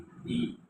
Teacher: ई आणि ई ही जी जोडी आहे ती आहे तालव्य, म्हणजे ताळू, आपली जीभ अशी ताळूला लागते, ते तालव्य आहे. ई ई. नंतर आहे उ उ, ओष्ठ्य आहे.